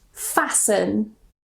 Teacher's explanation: if we have the ending S-T-E-N, we normally don't pronounce the T. So we just pronounce it sun, sun.